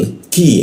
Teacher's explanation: Nah qi itu di sitan lidahnya diturunkan udara terbuka lebar sehingga ketika dibaca ada musan udaranya